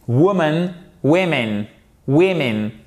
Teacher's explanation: Ici, vous avez l'accent tonique toujours sur la première syllabe. · Là, on passe d'un ou court à un i court.